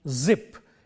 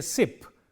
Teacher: The difference between these two words is only in the voicing. When we say zip, the z sound is voiced. When we say sip, the s sound is voiceless.